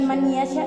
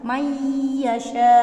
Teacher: Ditambah sedikit dengung, melebur dan mendengung. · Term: idgham bi gunnah